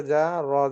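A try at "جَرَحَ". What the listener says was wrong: জিমে টান হয়ে গেছে, তাহলে কিরকম করে পড়তে হবে? জি, জারহা, দ্রুত। জিম জবর জারহা, জারহা, জারহা। কষ্ট করে উচ্চারণ, তাড়াতাড়ি পড়ুন।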